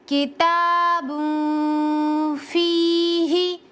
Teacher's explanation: गुन्ना एक अलिफ के बराबर करेंगे